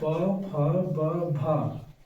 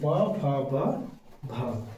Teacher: तो इसका उच्चारण स्थान ओष्ठ से होता है।